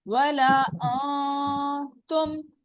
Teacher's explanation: نون پہ جانا ہی نہیں ہے, ہم نے زبان کو اوپر تالو کے ساتھ ٹچ ہی نہیں کرنا. وَلَا تم, فوراً تے کے مخرج وَلَا پہ چلے جانا ہے.